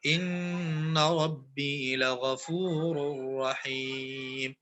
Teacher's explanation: ربی کو کیسے پڑھیں گے؟ پور پڑھیں گے، موٹا پڑھیں گے